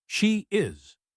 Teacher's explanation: The /I:/ at the end of she links to is with a /J/sound.